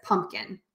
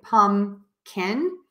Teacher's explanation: some people drop the p in the middle and say pum can some people actually just say an N